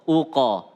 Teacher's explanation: kalau qaf itu qalqalahnya lebih ke arah o, uqa, bukan uke ya, uqa.